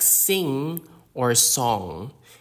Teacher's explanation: the NG sound is nasal and doesn't have a direct English equivalent except in words like sing or song